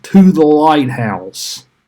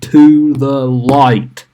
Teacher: You have an anapest. So that is unstressed, unstressed, stressed.